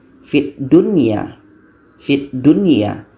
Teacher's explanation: Jadi tidak ada dengungan dibaca wajib jelas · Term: idzhar wajib